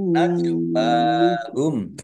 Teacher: jim sukun bacaan qalqalah dibaca memantul ditampakkan pantulannya